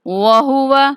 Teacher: یہ ہا اقصائے حلق یا انتہائی حلق سے ادا ہوتی ہے، اس کو بھاری کر کے پڑھیں گے۔